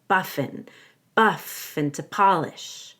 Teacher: I want to link buff and together so it sounds like buffing